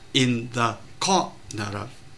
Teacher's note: từ corner có hai âm tiết thì chúng ta phải biết là rơi vào core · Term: trọng âm